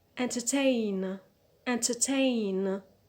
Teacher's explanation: so the stress is on the last syllable on ten